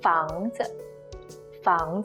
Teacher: neutral no tone Mark no stress just brief and light